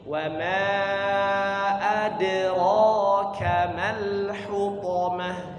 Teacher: Kemudian setelah wa ma adraka huruf dal sukun di tengah, maka kita qalqalahkan ya, qalqalah sughra, sekedar pantulan kecil ya. Adra tidak sampai suaranya putus, bukan adra, bukan wa ma adraka ma.